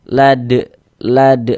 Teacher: Huruf dal sukun lagi mantul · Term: qalqalah kubra